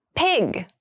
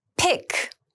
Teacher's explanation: Pig has the voiced g sound and pick has the unvoiced k sound.